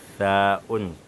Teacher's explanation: On met la langue en dessous des dents qui sont en haut. On dit en dessous des incisives supérieures.